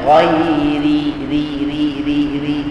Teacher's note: ra yang dibaca dengan nipis hanya satu sahaja iaitu pada ghairi